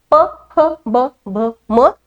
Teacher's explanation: यांचा उच्चार करताना मला ओठांची हालचाल करावी लागते त्याशिवाय हे वर्ण उच्चारले जात नाही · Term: ओष्यवर्ण